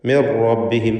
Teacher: സാക്കിനത്ത് അനൂനിന് ശേഷമുള്ള റായിൽ പൂർണ്ണമായും ലയിപ്പിച്ച് മണിക്കാതെ ഉച്ചരിക്കുക. ഇദ്ഗാം ബിഗൈരി ഗുന്ന.